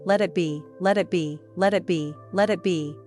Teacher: the T sound in let is often softened, almost dropped. Native speakers usually don't pronounce a hard T there.